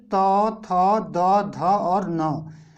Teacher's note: ठीक है, त से हमने शुरू किया और 5 तक गए, तो त थ द ध और न, ये पांचों के पांचों वर्ण जो हैं इनका उच्चारण स्थान आपका दंत से होगा